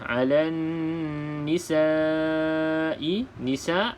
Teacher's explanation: Lam yang kosong alif lam syamsiah, maka abaikan huruf lam tersebut, tidak perlu dilafazkan dalam bacaan, terus masuk ke dalam huruf nun yang bersabdu · bila mana huruf nun bersabdu sama seperti mim yang bersabdu. Perlu didengungkan dengan 2 harakat. Wajibul gunnah.